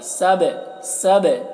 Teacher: با میں قلقلہ کریں گے، با میں آواز ٹکرائے گی